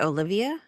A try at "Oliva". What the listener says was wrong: No, there's no I there. Oliva.